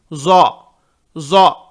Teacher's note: یہ نقطے والا ضا ضا، اس میں تھوڑا زیڈ کی آواز زیادہ آئے گی